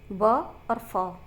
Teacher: अब चलते हैं दंतोष्ठ है। दंतोष्ठ में मतलब दांत और ओष्ठ का प्रयोग हो रहा है